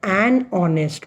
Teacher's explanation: The sound of O is heard. H is silent.